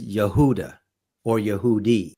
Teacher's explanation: the J sound was not a written sound and it was not a pronounced sound in Hebrew